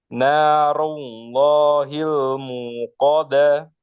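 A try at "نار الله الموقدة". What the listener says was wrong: Ru, coba sempurnakan ru.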